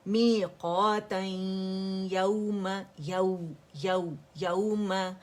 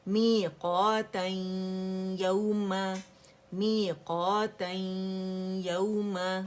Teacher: ادغام ناقص, incomplete merging with غنہ